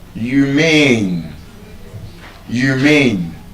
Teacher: So, that word as an adjective, humane, is stressed on the second syllable.